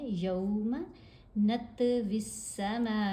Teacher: پھر پڑھتے ہیں یوم، یا کے اوپر زبر، ساتھ واو ساکن، واو لین ہے، یوم نطوی السماء، میم کے اوپر یہ جو مد ہے، مد متصل ہے، 5 حرکت کے برابر لمبا کریں گے